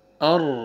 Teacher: را کو پر کریں گے، را سکون سے پہلے فتحہ آ رہا ہے۔